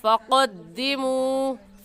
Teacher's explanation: हलक के आखिरी हिस्से से जो कव्वे के पास है उस आखिरी हिस्से को ऊपर तालू यानी हलक में लगाने से क़ाफ निकलता है। तो क़ाफ की जगह काफ कहना गलत है, ऐसे पढ़ेंगे फ़क़द्दिमू।